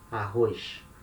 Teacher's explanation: Here in Rio we say with our particular S sound, sh, arroz.